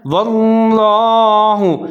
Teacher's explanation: لفظ اللہ کو موٹا پڑھنا ہے کیونکہ اس سے پہلے واو کے اوپر زبر ہے